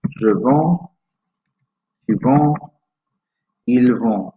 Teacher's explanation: Because we have a D there, albeit a silent D that simply is part of the nasal vowel sound, we don't actually need to add a T.